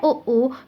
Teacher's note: जब हम ओ बोलते हैं तो हमारे होठों का जो आकार है वो थोड़ा सा गोल हो जाता है और होठों की सहायता से ये ध्वनि निकलती है ओ, तो इसका उच्चारण स्थान ओष्ठ्य है।